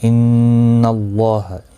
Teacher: ان اللہ، نون مشدد پر گنہ ہوگا. اللہ کا لام زبر کی وجہ سے پر پڑھا جائے گا. اس اللہ کے لام کے اوپر کھڑی زبر بھی ہے، 1 الف کی مقدار کے برابر کھینچ کر بھی پڑھا جائے گا.